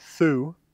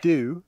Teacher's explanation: That th would become a d, however, not a t, in a lot of low-stress common words.